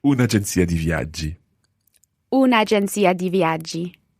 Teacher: We don't want to say una agenzia di viaggi. So we say un'agenzia di viaggi and we put in an apostrophe because we've lost that vowel.